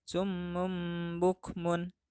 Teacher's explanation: yaitu apabila nun sukun atau tanwin berhadapan dengan huruf ba maka nun sukun atau tanwin tersebut dibaca beralih menjadi m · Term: iqlab